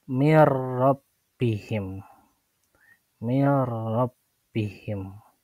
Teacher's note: Nunnya dileburkan dan dimasukkan kepada huruf ro.